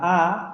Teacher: Para la A, si yo pronuncio la A, me doy cuenta que primero la posición de la lengua queda en un estado más neutral y la redondez de los labios disminuye considerablemente con respecto a la O